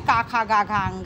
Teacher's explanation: क वर्ग जिसमें का खा गघ अंग आता है जिसका उच्चारण स्थान कंठ है